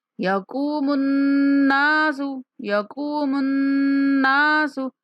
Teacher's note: میم کو نون کے ساتھ ملاتے ہوئے غنہ کریں گے. نون کے بعد الف مدہ بھی ہے تو غنہ کرتے ہوئے نون کو کھینچنا بھی ہے.